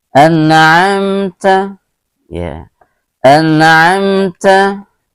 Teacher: ini hukum bacaannya izhar syafawi, juga tidak boleh didengungkan